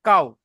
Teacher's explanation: ওয়াও সাকিনের ডান দিকে জাবার এসেছে, একে ওয়াওলিন বলা হবে। ওয়াওলিনকে নরম আওয়াজে তাড়াতাড়ি পড়তে হবে, টান দেওয়া নিষেধ